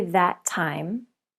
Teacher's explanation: the two words share the T sound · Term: link